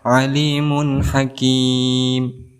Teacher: Tidak boleh didengungkan, tetapi harus dilangsungkan